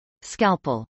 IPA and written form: skˈælpəl (scalpel)